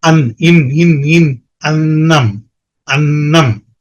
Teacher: அது ரொம்ப மெல்லிசா இருக்கும் எப்படி அந்த உச்சரிப்பு டிஃபரன்ஸ் வருது அப்படிங்கறது பாத்தீங்கன்னா அன்னம் சொல்லும்போது நுனி நாக்கு மேல்பல் வரிசையின் உட்புறத்தை தொடும் நம்ம பல் இருக்குல்லையா அந்த அப்பர் edge of the teeth அப்படின்னு சொல்லுவோம்